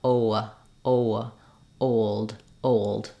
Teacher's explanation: naturally the W sound happens when I move from o to uh